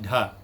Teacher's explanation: aspirated next is d h dha it is dental and and it is also voiced aspirated